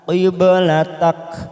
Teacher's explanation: huruf ba sukun, qalqalah sugro kita pantulkan